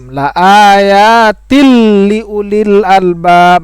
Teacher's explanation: maka hukumnya adalah idgham bila gunnah, tidak ada dengung di situ